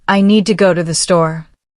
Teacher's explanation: The important words are need, go, and store. The rest are said more softly. Native speakers naturally emphasize the key words. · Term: stress pattern